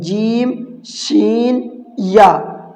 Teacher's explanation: زبان کا بیچ اوپر کے تالو سے مل کر ادا ہوتے ہیں۔ زبان کا بیچ اوپر کے تالو سے مل کر، زبان کا جو بیچ کا حصہ ہے، دیکھو یہاں پر ایرو کا نشان بنا ہوا بھی ہے، یہ زبان کا بیچ کا حصہ اوپر جو تالو ہے ہمارا اس تالو میں ٹچ کریں گے جب یہ تینوں لفظ نکلیں گے، جیم شین یا۔